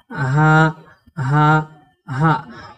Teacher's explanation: এই গোল হা উচ্চারণে মুখ থেকে কোনো রকমের বাতাস বের হবে না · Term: লম্বা হা